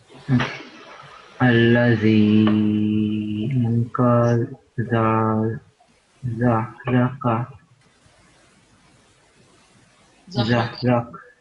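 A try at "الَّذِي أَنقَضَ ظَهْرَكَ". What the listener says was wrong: Yeah, good. Jazakumullah, that was fine.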